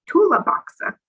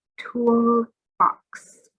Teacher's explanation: two sounds together box it's not tula boxer it's tool box the l stays the tongue stays on the top of my mouth